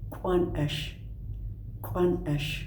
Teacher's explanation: The K with an apostrophe and a little raised W, glottalized rounded K